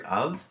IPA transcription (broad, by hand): ov